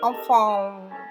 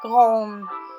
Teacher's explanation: n արդեն քթի մեջ սեղմում ենք ու կանգնացնում ենք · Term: Քթի հնչյուններ